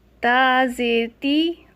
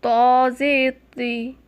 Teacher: تو کو موٹا پڑھنا چاہیے کیونکہ حروف مستعلیہ یعنی پونٹے پڑے جانے والے حروف میں سے ہے